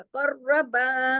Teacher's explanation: कर्रा में काफ मोटा, रा के साथ सख्ती से जुड़ेगा, रा की आवाज 2 दफा आनी चाहिए , कर रा हैवी हो जाएगा, कर्रबा, बा बारीक होगा लेकिन